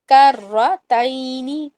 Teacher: کرتین میں را کو لازم موٹا کرنا ہے اور تینی نہیں بولنا